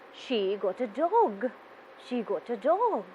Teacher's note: i can focus on dog with hint of surprise then my voice will be going up towards the end of the sentence · if i focus on the word do and say the sentence as a statement my voice will be going down towards the end of the sentence